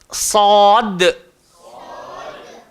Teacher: Sama juga, huruf sad keluar dekat mana? Hujung lidah, langgar belakang gigi bawah. Dan sifatnya kena tebal. Dia tidak melibatkan bibir, jadi tak perlu kita sebut sad.